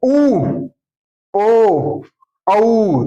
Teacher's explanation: होठ क्या हो जाते हैं, गोल। तो उन्हें क्या कहते हैं, व्रतमुखी।